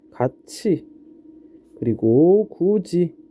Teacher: 모음 이에 영향을 받아서 구개음이 아닌 애들이 구개음으로 바뀌는 현상이다